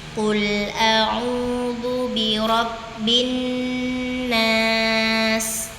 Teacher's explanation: Jangan buru-buru saat bin, tahan dulu dua, baru na, karena di situ ada gunnah pada nun bertasydid.